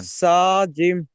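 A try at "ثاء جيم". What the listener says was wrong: জিম নয়, জিমটা তো double. জিম double অক্ষরে বানান, তাহলে একটু বেশি টান হবে। সা জিম।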